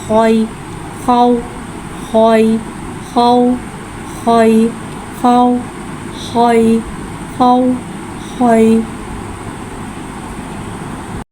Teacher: खौ को एक अलिफ यानी 2 हरकत के बराबर खींच के पढ़ेंगे। खौ हुर्फ मुस्तआलिया है, लिहाजा इसकी आवाज़ हलक से मोटी अदा होगी। खौ के ऊपर ज़बर है, ज़बर को मुँह खोल के अदा करके पढ़ेंगे।